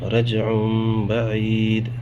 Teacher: با، عین یا زیر عی، دال دو پیش دن، رجع بعید، تنوین اس کے بعد پھر با، میم میں بدل کے غنہ اخفا کے ساتھ پڑھیں گے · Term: اقلاب